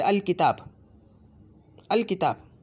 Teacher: बस अल है अब साकिन पढ़ा जाएगा, आगे कलिमा शुरू हो जाएगा, बस जैसा था वैसे ही पढ़ा जाएगा।